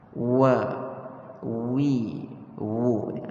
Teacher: Huruf waw sebagaimana yang telah kita beritahu pada pertemuan kita yang sebelum ini, bahawasanya ia adalah satu huruf yang keluar ataupun kita panggil makhrajnya daripada dua bibir mulut kita yang kita muncungkan.